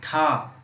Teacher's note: तो इसको हम बोलेंगे मूर्धा से उत्पन्न हो रही है ठा वर्ण की ध्वनि